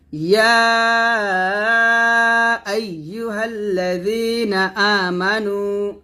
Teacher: ইয়া এখানে 3 আলিফ টান দিবেন, আইয়ু আইয়ু আইয়ুহাল্লাযীনা, হাল্লা এ হাগে লামকে ধরবে, ইয়া আইয়ুহাল্লাযীনা আমানু, আ টান হবে, মানু নুন হবে, পেশ টান হবে।